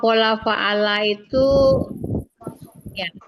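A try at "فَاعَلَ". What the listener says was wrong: fa'ala, biasanya panjang. Fa'ala. pakai panjang fa-nya, Bu.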